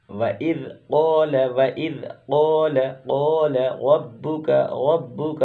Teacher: रा को पुर पढ़ेंगे, मोटा पढ़ेंगे, रा पर ज़बर है